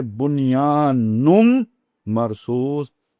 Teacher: تو یہ نون کے بعد جب میم آ گئی تو نون کا ادغام ہو جائے گا میم کے اندر، تو اب یہ بن گیا نون میم میں بدل گیا، تو جو دوسرا نون تھا، پہلا نون نہیں، جو دوسرا نون تھا وہ میم میں بدل گیا، تو اب آپ اسے پڑھیں گے بنیان مرصوص۔